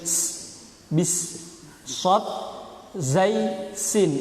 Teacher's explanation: sin itu punya sifat sofir. Sofir itu bersiul seperti halnya suara burung. Jadi harus bis, sod, zai, sin.